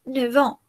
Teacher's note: Le F de 9 se pronuncia V. Antes o delante de años y horas, la F de 9 se pronuncia como una V.